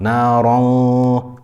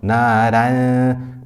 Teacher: And it's not naran. If we say naron, we've made the ghunna full mouth, and if we say naran, we made the ghunna and the ra light. No, instead we make the ra full mouth and we make the ghunna light.